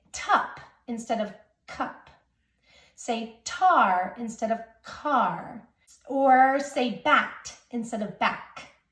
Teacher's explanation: It's any place that a k would show up in a word, that child is replacing it with a t sound. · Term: fronting